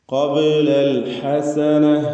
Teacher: ഹ തൊണ്ടയുടെ മധ്യമാണ്, ഐനിൻ്റെ അതേ മഖ്റജ് തന്നെ